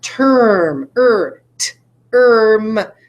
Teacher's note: I can't hear the vowel in term I can't hear it it's like the r is controlling it way too much